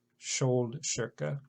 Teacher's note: SKJ and the KI combination, those are all SH sounds